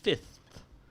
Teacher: the th at the end that's your voiceless dental fricative